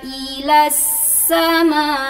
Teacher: Agak dihentakkan ujungnya untuk biar terbawa hamzahnya.